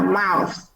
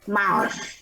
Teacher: Kết thúc phải là lưỡi để giữa răng và có gió nha.